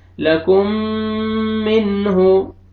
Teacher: नून साकिन के बाद हुरूफ हल्की में से हा आ रहा है, तो यहाँ भी आपने इजहार करना है , लाम फतहा ला, काफ दम्मा मीम शद कुम, लकुम, मीम